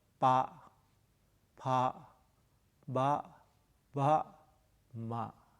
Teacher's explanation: the first consonant and the second consonant are unvoiced. And the third, the fourth, the fifth are voiced. · In each set, we divided into 5 consonants. The first one is unaspirated. The second one is aspirated. The third one is unaspirated. The fourth one is aspirated. And the last one, the fifth, is nasal.